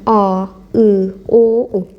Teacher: bu saitləri tələffüz edəndə görürsünüz ki, dilin arxa hissəsində tələffüz olunur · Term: dil arxası saitlər